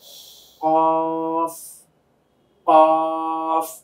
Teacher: জিহ্বার গোড়া তার বরাবর উপরের তালুর সঙ্গে গিয়ে লাগবে